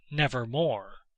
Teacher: the long o as the most sonorous vowel in connection with r as the most producible consonant